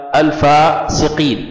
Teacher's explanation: القاف فيها قلقلة والياء بعد القاف فيه مد طبيعي، حركتان أو أربعة أو ستة